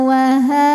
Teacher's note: ada baris fathah panjang di atas huruf ha maka dibaca panjang h-nya dua harakat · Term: Mad Thobi'i muqadar